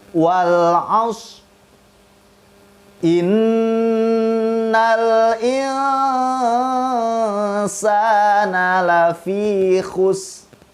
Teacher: Jadi lidah kita mengucapkan huruf ro hanya saja tidak sampai berbunyi atau mengeluarkan suara. Cukup makhrajnya saja kita gunakan oleh lidah kita.